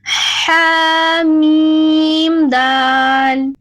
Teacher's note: حلق کے درمیان سے نرمی والا ح پھر میم اور دال ہے